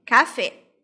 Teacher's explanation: Então, por exemplo, a palavra café, café termina com uma vogal, né? Então, a última sílaba é a sílaba tônica, então, é uma palavra aguda, terminada com vogal, então vai ter acento no E, café.